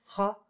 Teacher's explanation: in some dialects can be a voiceless uvular fricative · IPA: [χ]